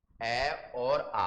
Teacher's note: अ और आ का उच्चारण स्थान कंठ है